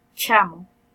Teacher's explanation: En el caso de la palabra chamo, si ustedes intentan hacer la ch, hay primero un estrechamiento entre el medio dorso de la lengua contra la parte del paladar duro. Y allí inmediatamente hay una salida después del aire que hace una fricción. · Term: la che